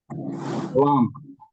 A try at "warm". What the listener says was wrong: नहीं, वो WARM है ना, उसमें एक्चुअली वॉर्म होता है। आ नहीं होता है उसके अंदर प्रोनाउंसिएशन।